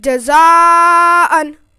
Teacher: حرف مد کے بعد حمزہ اسی کلمے میں ہے، اس لیے حرف مد متصل ہوگا اور 4 الف کے برابر کھینچ کے پڑھیں گے